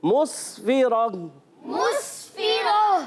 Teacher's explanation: रा पर ज़बर आने की वजह से रा को पुर अदा करेंगे। जब कभी रा पर ज़बर और पेश आ जाए, रा को पुर करके पढ़ते हैं। · सीन को सीटी के साथ अदा करेंगे